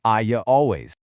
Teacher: if a word ends in an e or I sound, like the word I, we add a tiny y sound. I always becomes I ya always.